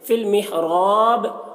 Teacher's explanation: را کو پر پڑھیں گے، را کے اوپر زبر ہے، اور یہاں پر وقف کریں گے تو با میں قلقلہ ہوگا، وقف نہیں کریں گے تو با میں قلقلہ نہیں ہوگا.